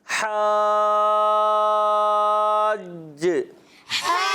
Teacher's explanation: ماشاءاللہ آواز ٹائٹ آتی ہے، مگر حاج میں کیا کرنا ہے؟ جیم میں کلکلا بھی کرنا ہے، ٹھیک ہے، مشدد کلکلا